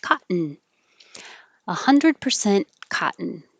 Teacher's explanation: in situation when you have an n after a t so your tongue is going to the t position first caught and then instead of saying cut ten hold it there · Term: syllabic in